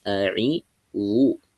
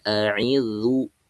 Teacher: Ujung lidah nempel ke ujung gigi serinya itu, ke ujung gigi seri atasnya itu ketika mulut dimonyongkan. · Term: huruf dha